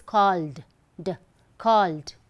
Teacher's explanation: Call, I feel the vibration. So it's called, d, called. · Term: d sound